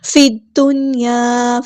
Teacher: لام یہاں پر لام شمسی ہے اس کو ظاہر نہیں کرنا ، دال تشدید والا ہے تو یہاں پر جو ہے یہ · فا کو ہم نے دال کے ساتھ ملا دینا ہے، حمزۃ الوصل ہمارا ڈراپ ہو جائے گا ، لام یہاں پر لام شمسی ہے اس کو ظاہر نہیں